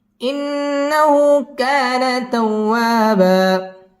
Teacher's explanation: তাওয়া বা দুই জবরের বামে ওয়াকফ হইলে এক আলিফ টানিয়ে পড়িতে হয়। আমরা এখানে এক আলিফ টান দিয়ে ওয়াকফ করব।